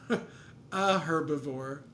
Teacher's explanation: there we pronounce the H because it's kind of a scientific word